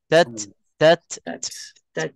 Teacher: maknanya betul banyakkan kesalahan itu dijadikan Ta ini sebagai Qalqalah maksudnya di sini ada huruf ta mati dan hukumnya hams dia ada bisikan sahaja